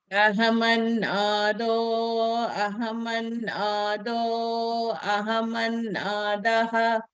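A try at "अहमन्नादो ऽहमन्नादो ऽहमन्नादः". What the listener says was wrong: Ahamannado hamannado hamannada. ఆ ఉచ్చారణ లేదండి, కలిపేసేయాలి మీరు. Ahamannado hamannado hamanna. హా మాత్రం బయటికి చెప్పాలి, ఆ ఆకారం లోపలనే చెప్పుకోవాలి, కలిపేసేయాలి.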